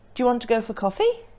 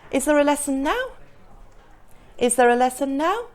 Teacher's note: the answer is either yes or no, so the intonation rises.